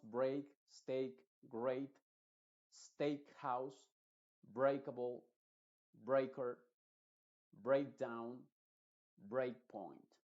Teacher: ei en este caso la e obviamente está haciendo muda y la a se está pronunciando con el sonido e que es el sonido original de la a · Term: sonido EI